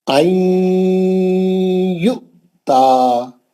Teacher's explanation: عین میں نون کو لے کے یا میں گھس گیا کیونکہ نون کے بعد یا ادغام مال غنہ کا حرف ہے، گھس گیا اس میں.